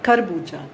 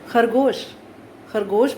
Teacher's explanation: खरगोश में जब हम ख का उच्चारण करते हैं तो हमें संघर्ष करना पड़ता है। ऐसे वर्णों को संघर्षी वर्ण कहा जाता है।